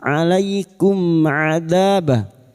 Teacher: Mim sukun bertemu 'ain, izhar syafawi. Mim sukun dibaca dengan jelas tanpa bunyi sengau. · Ada fathah meeting alif, two harakat mad thabi'i · mim sukun dibaca jelas tanpa mendengung. Ya, bertemunya mim sukun dengan huruf hijaiyah selain mim dan ba. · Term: Idzhar Syafawi, idhar syafawi